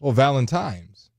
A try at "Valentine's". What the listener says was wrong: No, it's Tyne. It's an N, not an M.